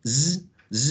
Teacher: So z would be voiced, oral, spread, fricative, and alveolar.